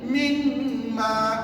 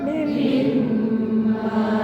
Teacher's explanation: Nun mati tu tak payah baca sebab dah masuk ke dalam huruf mim. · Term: idgham al-ghunah